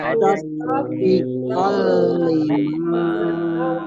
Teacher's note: fathah tanwin bertemu dengan huruf lam, bacaan idgham bila gunnah. Idgham masuk bi dengan la tidak, gunnah mendengung.